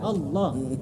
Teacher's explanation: kalau takbir itu kadang-kadang Allah kurang tebal. Jadi tipis Allah gitu.